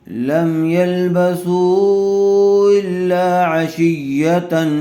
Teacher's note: پیش والے حرف کے بعد واو مدہ آیا ہوا ہے، اور واو مدہ کے بعد پھر دوسرے کلمے میں حمزہ آیا ہوا ہے، اس لیے مد منفصل کا قاعدہ ہوگا، سا کو کھینچ کر پڑھیں گے